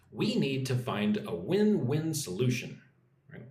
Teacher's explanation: Put some emphasis on solution.